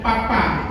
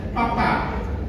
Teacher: bunyinya itu diledakkan bibir ketemu bibir, papa. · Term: plosif